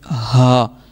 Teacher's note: اب یہ ہے حلق کے نیچے والے حصے سے ہا